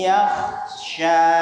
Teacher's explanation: Janur hidung atau al-khayshum, pangkal hidung yang bagian dalam itu harus kena, harus bergetar. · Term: idgham naqis bi gunnah